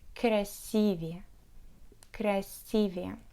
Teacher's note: So try to remember that the word красивый is an exception, and we should stress the second syllable of the word